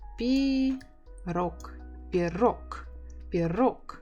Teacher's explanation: you can hear that I don't say G, I say K.